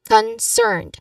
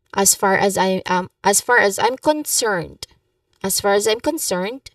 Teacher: in concerned, you emphasize the second syllable, cerned.